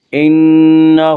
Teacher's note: انہ، ہا کے اوپر الٹا پیش ہے، الٹا پیش قائم مقام ہے، وا مدہ کے، اس لیے الٹا پیش کو ایک الف کے برابر کھینچ کر پڑھیں گے